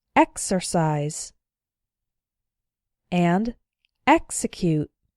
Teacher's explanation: the X is followed by a vowel, but the strong syllable is not immediately after the X, so the X is pronounced ks.